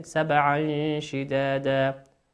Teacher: تنوين أتى بعده حرف الشين، والشين من حروف الإخفاء نخفيها